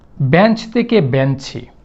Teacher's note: যখন বেঞ্চ থেকে বেঞ্চি হয় তখন দেখেন ওই পাশে গিয়ে শব্দের শেষে একটা রস্বইকার আসছে। এই যে শব্দের শেষে একটা রস্বইকারের আগমন ঘটিয়েছি, এই প্রক্রিয়াটাকে আমরা বলবো অন্তঃস্বরাগম